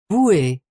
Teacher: the final syllable has become more emphasized with an a sound in modern French